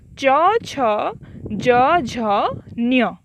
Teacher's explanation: एगुड़िकर उच्चारण स्थान तालु, तेणु एगुड़िक कुहा जाए तालव्य वर्ण